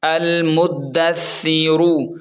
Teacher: ثا کو نرم پڑھیں گے کیونکہ نرم حروف میں سے ہے، اور را کو پر پڑھیں گے کیونکہ را کے اوپر پیش ہے